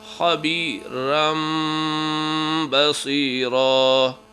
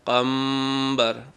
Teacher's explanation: آواز کو میم میں تبدیل بھی کرنا ہے اور غنّہ بھی کرنا ہے